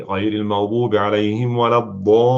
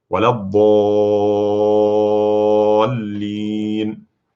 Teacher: We have a long vowel, ضا, and then followed by lam that has shadda on it. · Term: mad lazim